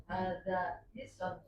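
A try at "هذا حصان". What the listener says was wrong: Sotnya dipanjangin.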